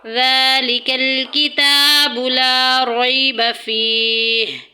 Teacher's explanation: زال میں سیٹی نہیں کریں گے، زا کی اور ذال کی آواز میں فرق ہوگا۔ زال جب ہم ادا کریں گے تو ہمارے جو زبان کی ٹپ ہے، جو زبان کی نوک ہے، وہ سامنے والے اوپر نیچے کے جو دونوں دانت ہیں، ثنایا علیہ اور سفلا، ان کے درمیان میں آ جائے گی۔